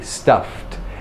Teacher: an unvoiced F is followed by T